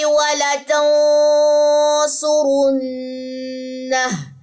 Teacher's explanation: نون ساکن کے بعد سواد، آج ہی ہم نے ٹاپک پڑھا ہے اخفا حقیقی کا، اس پہ ہم غنہ کریں گے اور یہاں پہ نون مشدد کا غنہ ہوگا اور الٹا پیش ڈراپ ہو جائے گا وقف کی صورت میں.